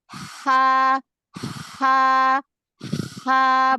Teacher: Ha itu punya sifat nafas mengalir, suara mengalir. Jadi alirkan aja.